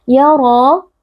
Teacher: Idgham bi gunnah, karena ada nun sukun bertemu dengan ya, dibaca dengan memasukkan dan meleburkan bunyi nun ke dalam huruf ya, disertai dengan dengung yang dipanjangkan. Ya ra, ra huruf tebal karena ra di sini berharakat fathah, dibaca dengan mengangkat pangkal lidah. Ra dibaca panjang 2 harakat karena ada mad tabi'i yaitu alif yang sebelumnya berharakat fathah.